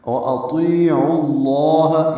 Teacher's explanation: عین کو لام اسم جلالہ سے ملائیں گے، پر پڑھیں گے عین کی پیش کی وجہ سے